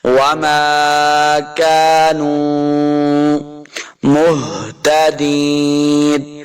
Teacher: نہیں کریں گے، کاف زبر الف کا، نون پیش واو نو، واو مدہ ہے، اس کو دو حرکات لمع کر کے پڑھنا ہے ، وما كانوا مہتدین، ہا کو حلقے نچلے والے حصے سے